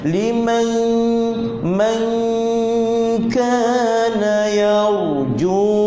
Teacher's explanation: Huruf kaf depan sedikit daripada makhraj huruf qaf, pangkal lidah. Jadi huruf kaf ni makhrajnya depan sedikit daripada pangkal lidah.